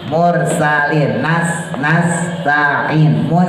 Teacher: posisi ujung lidah adanya tempat di antara gusi sama gigi bawah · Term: Sin